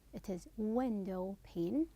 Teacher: Then window pane, it is window pane, the pane is unstressed.